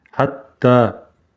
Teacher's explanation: Удвоенное та. Ударение на та.